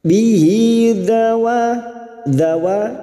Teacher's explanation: wa fathah bertemu alif, 2 harokat mad tabi'i